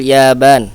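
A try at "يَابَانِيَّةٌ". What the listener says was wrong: Nah, hidupkan ya bani.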